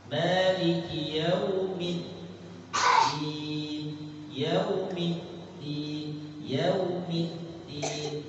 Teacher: Tertahan suaranya kuat, syiddah. Jadi kalau mau dibaca Maliki yaumiddin, midin, nah, belum tertahan kuat.